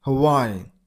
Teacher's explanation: You got a stress on the middle syllable.